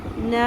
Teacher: ان، نون زبر، الف مد، نا، 3 الف کے برابر کھینچیں گے، مد منفصل